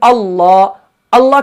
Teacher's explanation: जब आप पढ़ते हैं अल्लाह, अल्लाह का नाम पढ़ते हैं तो अल्लाह का नाम पढ़ने से पहले आ की आवाज आ रही है, तो वो जो आ है वो हमजा है